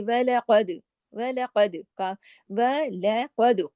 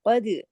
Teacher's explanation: वलक़द, काफ मोटा, दाल पे कलकला